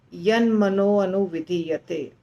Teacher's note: मनः का विसर्ग हट के और अनुविधीयते का अ हट के मनो हो जाता है